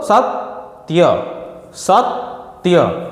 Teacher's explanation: આ ત એ અડધો અક્ષર છે અને એનો થડકો આગળ પડે છે સત બોલો તો સતત્ય સત્ય તો એ લઘુ હોવા છતા ગુરુ